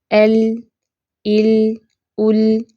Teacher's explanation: ال لی لو، اس کو لا لی لو ایسے نہیں پڑھنا، زیادہ منہ کھول کے نہیں ادا کرنا. لام کی جو آواز ہے یہ بلند ہے، نرمی اور سختی کے بیچ میں ہے، کھلی باریک ہے